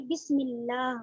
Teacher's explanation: میم سے لام کو ملا کر پڑھیں گے. بسم اللہ، میم پہ بھی حرکت ہے تو اس کو بھی زیادہ کھینچ کر نہیں پڑھیں گے، ہم جلدی پڑھیں گے، جھٹکے سے بھی نہیں پڑھیں گے.